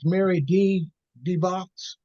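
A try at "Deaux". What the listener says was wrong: the dough, the dough, you know that they don't pronounce the X.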